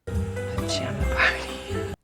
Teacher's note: in American English, it would be more like pajama with an A sound in the middle